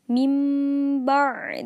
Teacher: tempat huruf yang lain serta tetap menjaga guna jadi iqlab artinya mengubah ataupun mengganti bacaan nun mati atau tanwin dengan bacaan mim jika bertemu dengan huruf ba